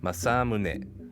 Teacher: [Music] now fortunately since this is a rather simple pitch pattern we can easily adapt this into english by placing stress on the second syllable